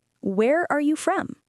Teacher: for questions that start with words like what, where, when, why, and how, the intonation often goes down at the end. · It goes down at the end on the word from. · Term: Falling intonation